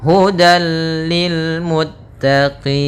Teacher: Maka tanwin diapakan dimasukkan kepada huruf lam, tapi tidak boleh ditahan, tidak boleh hudal, akan tetapi hanya idgham saja, dan dia termasuk idgham kamil yang sempurna. Ya, hudal lil muttaqin, langsung ke lam dan tidak ditahan. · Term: idgham bila gunnah